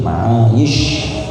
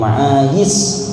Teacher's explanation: Pakai shin, ma'ayish, jangan ma'ayis, masalah.